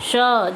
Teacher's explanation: श जब हम बोलेंगे तो हमारी जीभ जो है तालु से टच करेगी। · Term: तालव्य श